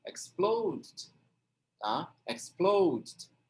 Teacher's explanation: Daí você vai colocar o Dzinho fraco ali no final.